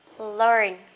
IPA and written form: lɜːn (learn)